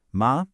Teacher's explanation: For hemp, it goes up like you're asking a question.